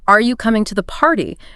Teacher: curious searching for an answer are you coming to the party notice how your voice naturally goes up at the end on party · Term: Rising intonation